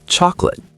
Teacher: Chocolate, 3 syllables become 2